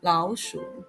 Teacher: The tone of 老 changes to the second tone, making the sound 老鼠.